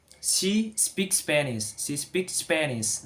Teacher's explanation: S meet with S. So we can read one.